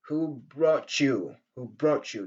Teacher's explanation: la rencontre entre le T de brought et le ye, donc nous donne le son che.